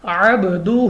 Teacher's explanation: اب یہاں پہ ہمارے پاس عب تو با ہمارے پاس حروف قلقلہ میں سے ہیں جو کہ قلقلہ 5 ہیں اور ان کا مجموعہ ہے قطب جدن، تو با ان 5 حروف میں ہے اس لیے ہم نے اس کو واپس لوٹتی آواز کے ساتھ پڑھا ہے عبدہ. ہا کے اوپر الٹا پیش ہے، ہم نے اس کو کھینچ کر پڑھا ہے 2 الف تک 2 سیکنڈ تک.